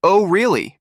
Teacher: Your voice rises at the end.